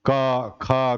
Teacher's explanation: तो क वर्ग जो है कंठ से है